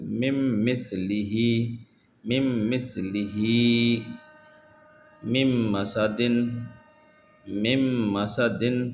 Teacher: نون کو چھوڑ دیا جائے گا، میم کو میم سے ملا کر۔